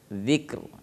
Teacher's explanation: Ada ra tetap terdengar di belakangnya. Jadi tidak boleh ro-nya dihilangkan. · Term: R tetap ada sedikit